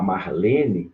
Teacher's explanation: se você pegar Marlene, a sílaba tônica é o lê, né? Marlene é uma palavra paroxítona.